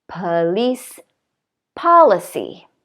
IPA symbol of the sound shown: a